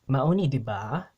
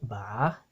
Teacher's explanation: You can see how there's also incorporation of the rising intonation and that ba diba, right? Ba it goes like this rising tone, like in Mandarin.